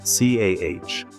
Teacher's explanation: Boston has a unique accent, often characterized by dropping the R sound, making car sound like CAH.